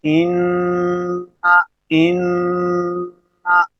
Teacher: تو نون جب ادا ہو رہا ہے تو زبان کا جو کنارہ ہے، زبان کی جو نوک ہے، اوپر والے تعلق کے سے ٹکرار دی ہے تو نون ادا ہو رہا ہے، اور اس کے بعد جو ان یہ آواز گونج رہی ہے، یہ ناک کے بالکل واسطے کے اندر گونج رہی ہے، جسے ہم خیشوم بولتے ہیں۔